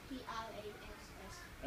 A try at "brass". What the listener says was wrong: It's not a P, it's a B.